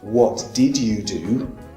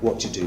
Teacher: if we say what did you do that also contracts to what you do